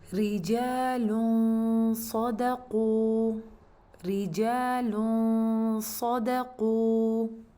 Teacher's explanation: جو آپ کا آخری لائن میں آخری لفظ ہے، ادھر اگر آپ دیکھیں تو لام کے اوپر ضمتین ہیں، ہم لوگ لام ضمہ پڑھیں گے اور ساتھ ہی ہم لوگ اخفاء کرنے لگیں گے، اور اخفاء کے دوران ہم لوگ صاد کے مخرج کو ٹچ کر رہے ہوں گے۔ جیسے ہی ہمارا غنہ ختم ہوگا تو ساتھ ہی آپ نے پھر صاد کو ادا کر دینا ہے۔